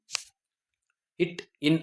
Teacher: இட் இன் ஆகிய இரண்டு மெய்ெழுத்துக்களும் நாவின் நுனி அன்னத்தின் நுனியை பொருந்துவதால் பிறக்குது. நாவோட நுனி அன்னத்தோட நுனியை பொருந்தனால பிறக்குது